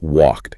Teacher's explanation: Because the K is unvoiced, the brain just seamlessly changes that final D into its unvoiced partner. Which is a T.